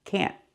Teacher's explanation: We use a stop T. Put the tongue up and stop the air.